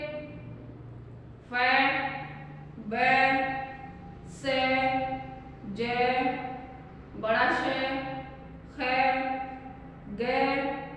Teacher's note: जब मुख द्वार इतना संकरा हो जाता है कि हवा बहुत रगड़ खाती है और उसको सितकार की ध्वनि निकलती है, तो ऐसे व्यंजनों को संघर्षी व्यंजन कहते हैं।